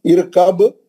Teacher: اب آپ با پڑھیں گے تو با پہ خلخلہ کریں گے کیونکہ با ساکن ہے